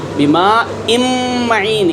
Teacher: نون کا میم میں ادغام ہو رہا ہے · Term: ادغام تام